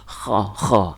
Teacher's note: huruf kha itu naik ke atas seperti ada duri nempel di tenggorokan atas, kita keluarin kha.